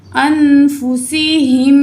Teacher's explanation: यहाँ नून साकिन के बाद दाल हरूफ इख्फा में से है, तो यहाँ हम क्या करेंगे, नून की आवाज़ को नाक में छुपा के पढ़ेंगे